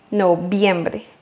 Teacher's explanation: Ici, le R, il est au milieu du mot. Donc, c'est le R simple.